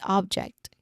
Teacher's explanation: That's the noun version of the word, meaning it's a thing, it's an item or something that you can touch. That's object, okay? We stress on the first syllable here.